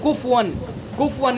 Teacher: जल्दी में हम पढ़ देते हैं कुफवन, कुफवन यानी फ़ा के ऊपर सुकून पढ़ देते हैं। वलम यकुल लहू कुफवन अहद, तो कुफवन अगर हमने पढ़ा, हरकत की जगह हमने सुकून पढ़ दिया तो ये भी लहन जली गलती हुई और ये भी बड़ी गलती है।